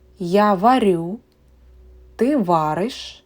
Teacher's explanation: Please note that the stress in the first person singular, я, is on the last syllable. And in all other persons and time, it is on the first syllable.